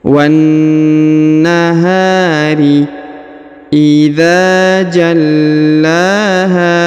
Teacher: Huruf ha dibaca panjang 2 harokat karena di depannya terdapat alif.